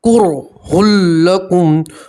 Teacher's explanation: دیکھیے نون ساکن اور تنوین کے بعد لام اور را میں سے کوئی ایک حرف آتا ہے تو نون ساکن اور تنوین کا ادغام ہوگا مگر گنہ، دیکھیے تنوین کے بعد لام آیا ہے تو تنوین کو اب لام کے اندر ملائیں گے، ادغام کریں گے مگر گنہ نہیں کریں گے، کرہ لکم، اور میم کے اوپر آپ وف کریں گے تو میم کے اوپر جزم ہے ہی تو وہاں کچھ بدلنے کی ضرورت نہیں ہے۔